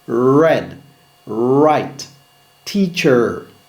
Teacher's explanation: Le R américain, langue courbée sans contact.